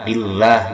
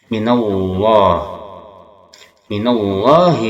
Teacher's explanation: baca tebal pakai o, yang mana pangkal lisan, yaitu lisan yang dekat dengan tenggorokan kita angkat, itu tafhim